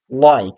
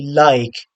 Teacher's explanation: at the beginning of a word, the dark L is not possible in the British accent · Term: light L